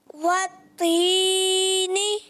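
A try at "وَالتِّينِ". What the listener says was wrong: پھر آپ نے لمبا کر دیا، وتینی، یہی تو سمجھا رہے ہیں کہ وتینی نہیں کرنا، ورنہ پھر قرآن بھی آپ اسی طرح پڑھیں گے، وتینی والزیتونی، تو یہ عجیب سا ہو جائے گا۔ تو آپ نے ایک حرف مدہ کی مقدار، وتینی، اتنا بس، ٹھیک ہے؟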